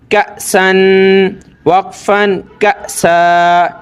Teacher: یہ یاد رکھنا حمزہ ساکنہ جھٹکے کے ساتھ